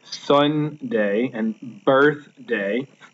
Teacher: The first part of the word is stressed, and the second part is unstressed. So that would make it trochaic.